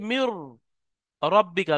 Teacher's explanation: নুনটা সম্পূর্ণ রয় মধ্যে ঢুকে গিয়ে র উচ্চারণ হবে। · যেমন দেখেন, মিম নুন র আজের মির, এখানে নুনটা সম্পূর্ণ বাদ যাবে, গিয়ে সম্পূর্ণ রোয়ার মধ্যে ঢুকে যাবে। নুনটা সম্পূর্ণ রোয়ার মধ্যে ঢুকে গিয়ে র উচ্চারণ হবে, মিম নুন রাজের মির রব্বিকা, নুনের কিছু অংশ বাকি থাকবে না। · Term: ইদগামে তাম, ঈদগামে তাম